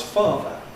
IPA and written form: ˈfɑːðə (father)